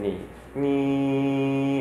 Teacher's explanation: at the mouth essentially the velum is in the mid position some air is directed out the nose some air is directed out the mouth that's going to be a nasalized sound · Some air is directed out the nose, and some air is directed out the mouth. Essentially, the velum is in the mid position.